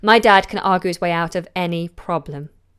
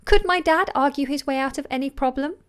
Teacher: if I'm asking a question I would go up · A slight fall, actually, in intonation at the end.